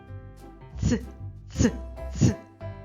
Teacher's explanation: Горло не вібрує, мовчить. Ми долонею не відчуваємо вібрацію голосових зв'язок. Звук ц приголосний, твердий, глухий.